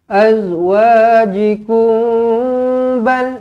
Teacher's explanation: Dengungkan dua harakat, mim kosong bertemu dengan ba, ikhfa syafawi.